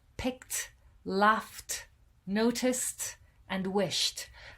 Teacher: when you pronounce them there's no vibration in your throat so with these consonant sounds it's much more difficult to add a d sound it's much easier to add a t sound · with these consonant sounds, it's much more difficult to add a d sound. It's much easier to add a t sound. But we don't modify the word in any way other than to add this t sound at the end.